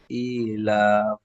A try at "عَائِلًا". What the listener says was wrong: ইলা হবে না, ইলান। আইনটি মধ্যে মুত্তাসিল, তারপরে লামের উপর দুজাবার তানবিন, তানবিনের পরে হরফে ইকফা 15টি অক্ষরের মধ্যে ফা এসেছে, তাহলে তানবিনটি একালি গুণ হবে, একে ইকফা বলে।